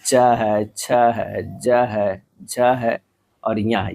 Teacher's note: यह सब जो है तालु से उच्चारित वर्ण है।